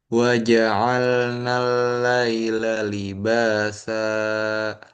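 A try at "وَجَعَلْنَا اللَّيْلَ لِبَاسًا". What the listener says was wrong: Kepanjangan samakan dengan ba. Ba di sini dua, sa juga dua. Libasa.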